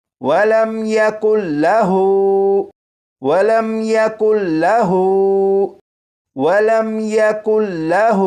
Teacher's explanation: ہا کو ایک الف کے برابر کھینچا کیونکہ ہا کے اوپر الٹا پیش ہے